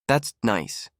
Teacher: When you're sarcastic, it drops slowly.